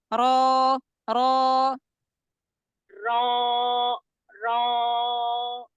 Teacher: naikkan suara ke bagian depan karena dia tebal tafhim